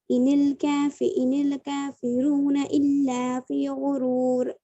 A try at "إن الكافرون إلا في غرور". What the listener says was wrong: آپ حروف مدہ کو تھوڑا ایک الف کے برابر کھینچیے، ٹھیک ہے؟